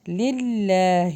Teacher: اللہ کے نام کو نا موٹا نہیں کرنا، للہ نہیں پڑھنا، باریک پڑھنا ہے